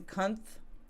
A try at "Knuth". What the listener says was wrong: oh it's like night connect the k is silent